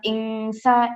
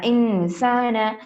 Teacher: ان میں ہمیں غنہ کرنا ہے 50%